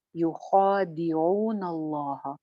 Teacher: یخا ایک الف لمبا اور موٹا، خا موٹا ہے نا